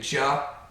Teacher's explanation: the vocal cords vibrate before you release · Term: voiced